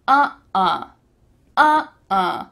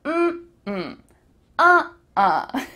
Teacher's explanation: when you say uh-uh, uh-uh, you're going from high to low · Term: intonation